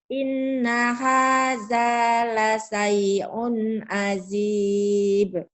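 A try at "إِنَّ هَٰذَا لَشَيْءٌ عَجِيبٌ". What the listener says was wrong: Bagus, tapi tinggal shinnya ya. Inna hadza la syai'un, la syai'un. Shin. Ayo lagi.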